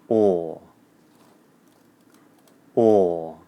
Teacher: the OR vowel sound is made with the tip of your tongue down behind your bottom teeth, and the back of the tongue is in the middle of the back of the mouth. The lips are rounded, the jaw is loose, and the teeth are apart, and the OR vowel sound is long in duration.